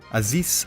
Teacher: Aziz should end with an elongated S.